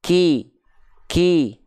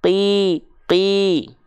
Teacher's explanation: Kalau ketika kita melafalkan huruf kaf tuh dia ada percikan nafasnya dulu.